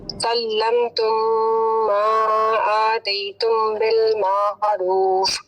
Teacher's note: اور سلم تم یہ میم کے بعد متحرک میم ہے تو یہ ہو جائے گا ادغام